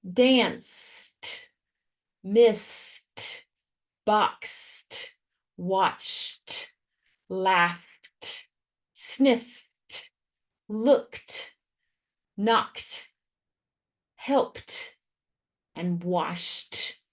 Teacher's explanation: Ed is going to say the t sound after voiceless phonemes, meaning if the sound right before the ed is voiceless, like your voice is not on, then the ed is also going to be voiceless with a t sound. For example, if the sound right before the suffix ed is s, ch, k, sh, all of those are voiceless phonemes.